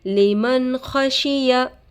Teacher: ساکن کے بعد حروف حلقی میں سے خا آ کر ہے نون کے آواز کو ظاہر کر کے بغیر غنہ کے جلد پڑھیں گے اس کو اظہار کہتے ہیں خا پر زبر کی حرکت ہے